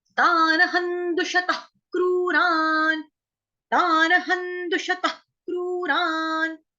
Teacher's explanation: तानहन, त आन तान, उसके बाद ह के ऊपर जो अनुस्वार है उसका उच्चारण होगा आधा न · इसको तख नहीं बोलना, क्योंकि हमको यहाँ पे हल्का सा टच देना होता है कि हमने ख बोला है, मतलब जब हमने सांस छोड़ी तो श्वास में क्या हुआ, हल्का सा ख सुनाई देगा · उसके बाद है दुषतः क्रूरान, यहाँ पे विसर्ग है, विसर्ग का उच्चारण हम करेंगे आधे ख से